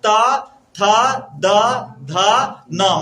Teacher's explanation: मतलब जीभ स्पष्ट रूप से कहाँ आ रहा है? दांत के पास आ रहा है।